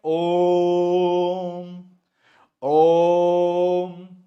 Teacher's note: ओ के बाद अ वाला जो खींच रहे हैं ना हम लोग, वो प्लुत स्वर कहलाता है। मंत्र वगैरह में, वेद मंत्र पाठ में इसका यूज किया जाता है।